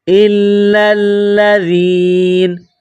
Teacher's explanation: جب وقف کریں گے، اسٹاپ کریں گے تو نون کو سائلنٹ کریں گے، وقفاً، الا الذین، وقفاً، الا الذین۔